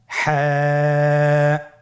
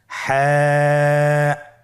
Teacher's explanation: হা হরফটি উচ্চারিত হবে কণ্ঠনালীর মধ্যখান হতে। গলা চিপে ধরে আপনি উচ্চারণ করুন।